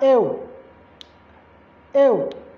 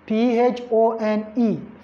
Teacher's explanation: It's articulated as ew, ew. It's a schwa and you. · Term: diphthongs